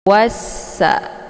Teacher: sesudah alif lam terdapat huruf Syamsiah yaitu Sin jadi cara bacanya wa-nya langsung dileburkan ke dalam huruf Sin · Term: Idgham Syamsiah